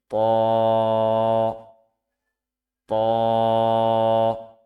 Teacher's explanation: জিহ্বার আগা সামনের উপরের দুই দাঁতের গোড়ার সঙ্গে লাগিয়ে উচ্চারিত হয় ত।